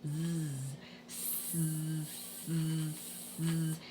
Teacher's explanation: A Z is the S sound, but we turn our voice on.